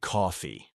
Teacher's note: It's all about that stretched awe sound.